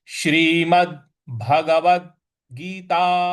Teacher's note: श्रीमद् भगवद गीता, यहाँ श्रीमद् द पे आघात देना है, बल लगाना है।